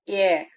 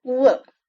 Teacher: இதே அ அப்படிங்கற சென்ட்ரல் வவ்வலோட முடிஞ்சுச்சுன்னா அதை நம்ம சென்ட்ரிங் டிப்தாங்னு சொல்றோம்